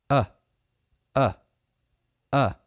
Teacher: If you put your hand on your Adam's apple and say, uh, that little clicking feeling you feel in your throat is the beginning vibration of the vocal cords